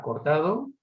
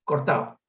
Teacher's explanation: Finalmente la tercera variable es la consonante, esa misma consonante, la consonante D, en posición intervocálica, una palabra como cortado, con 2 variantes fundamentales, la pronunciación aproximante relajada, cortado, y la pronunciación elidida